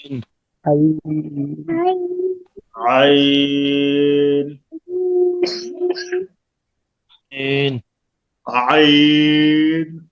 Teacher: আইন গলা চেপে ভিতরে নিয়ে পাতলা আওয়াজ